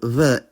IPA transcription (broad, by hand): β